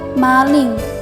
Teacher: fonem vokal A yang berada di pusat rendah, yang direalisasikan dengan bunyi A pada contoh kata maling, yang distribusi fonemnya berada di tengah kata.